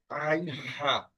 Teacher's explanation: আর গলার মাঝখান থেকে হচ্ছে আইন হা